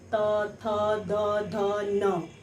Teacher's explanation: त वर्ग दांत उसका उच्चारण स्थान माना गया है, यानी त वर्ग के उच्चारण के समय जीवा दांत को छूती है।